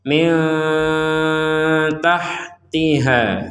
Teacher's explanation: nun mati bertemu ta kita membacanya dengan samar Min tahtiha Nah kita kalau berhenti ada harakat fathah bertemu Alif